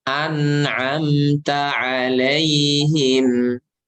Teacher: Ya, nggak bisa dipisah dari mim dan nun ini sifat gunnah. Karena ketika ngucapin an itu pasti ada yang keluar dari hidung suara.